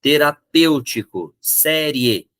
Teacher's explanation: eu fecho em um único sopro de som eu pronuncio as duas vogais isso é um ditongo